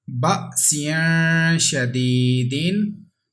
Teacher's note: there is ikfa letter after tanween, that's why there is ikfa with gunna · There is ya madda, that's why we have to stretch equal to 1 second.